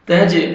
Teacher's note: تا کو باریک پڑھنا ہے تاکہ تھا میں ساؤنڈ مکس نہ ہو. تج، جیم پہ ڈبل ساؤنڈ آئے گا، قلقلہ کریں گے